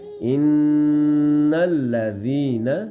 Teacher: 1 second کے برابر نون کی آواز کو ہم ناک میں چھپائیں گے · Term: غنہ